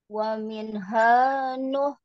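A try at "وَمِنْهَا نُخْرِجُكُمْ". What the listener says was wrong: Seperti biasa tadi, nun setiap huruf sukun ada jedanya Bu, ada jarak. Tidak wa minha, tapi wa minha nukhrijukum nah, itu coba sedikit afwan, bukan berarti memutus huruf, tapi dialirkan, apalagi huruf nun.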